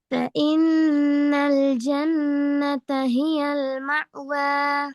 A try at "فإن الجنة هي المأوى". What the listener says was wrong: விலை மா என்று தொண்டைக்குள்ள போகலாது. மா அல்ல ம ம.